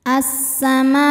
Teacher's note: Mad tabi'inya alif didahului fathah, hamzahnya a, sama-sama ada dalam kata as-samaa. Maka mimnya dipanjangkan, boleh 4, boleh 5 harokat · ada Ya Sukun sebelumnya berharakat fathah cara bacanya kita lembutkan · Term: mad wajib muttasil, harfulfulin